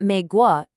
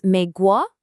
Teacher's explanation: It's a second tone. Your voice has to go up. So it's not mei guo, it's mei guo, like a question.